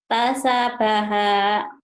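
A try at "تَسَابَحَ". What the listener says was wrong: Sanya panjang Bu. Sanya panjang. Tanya pendek. Tasyabaha.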